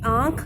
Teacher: आंख जब हम बोल रहे हैं तो नाक और मुंह दोनों में से आ रही है आवाज़। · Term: अनुनासिक